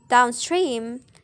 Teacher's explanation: The primary stress is placed on the second word and the secondary stress on the first word.